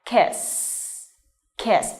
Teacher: this is an unvoiced sound. Okay, so you touch your throat and you won't feel any vibration in your throat when you pronounce this.